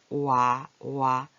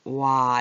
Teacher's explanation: 얘는 오와 아. 와는 오와 아가 붙어서 와, 두 가지 소리가 나죠. 처음에는 오 이렇게 시작했지만 끝에는 와 이렇게 되잖아요. 그래서 이렇게 이중모음이라 그래요.